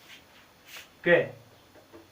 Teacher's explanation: जीभ है हल्की सी हमारे कंठ को स्पर्श करती है। कै जीभ स्पर्श करती है।